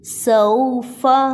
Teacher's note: اس کو صحیح کلیئر کر کے پڑھیں گے اور سیٹی کی اواز انی چاہیے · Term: سیٹی کی آواز